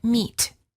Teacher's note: The lips are slightly smiling, tense, and not rounded, and the tongue is tense. It is high and far forward near the roof of the mouth.